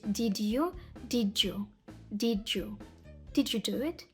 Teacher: а друге слово наступне починається на звук й наприклад did did у цьому випадку що роблять носії д стає також звуком Дж а й в звук в цьому звуці прибирається виходить did you